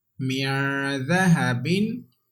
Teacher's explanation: dal is ikhfa letter, and we have to read with gunna. And dal has come after nun sakin, that's why there is ikhfa.